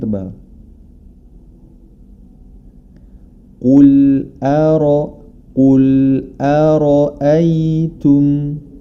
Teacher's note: Huruf ro dibaca tebal karena dia berharakat fathah. Hati-hati jangan sampai hamzah di sebelum huruf ro atau setelahnya ikut menjadi tebal. Karena huruf ro saja yang tebal.